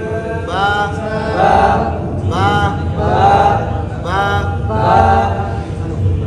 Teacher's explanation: با با. آخر میں آواز کو کہیں ٹھہراؤ نہیں. اگر ادھر ٹھہرائیں گے حمزے کی آواز آئے گی یا پھر ہا کی آواز آئے گی